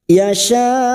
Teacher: ini Hamzah sifatnya syiddah tertahannya suara tertahannya suara ketika mengucapkan huruf tersebut